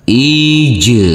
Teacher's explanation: huruf Jim yang bersukun ini harus kita pantulkan karena ini adalah bacaan Qalqalah